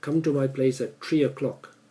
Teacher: Another problem is that some languages and cultures have a problem understanding, say, combination of letters such as T and H. So people in Singapore tend to say TH, which is a th sound, they say tr.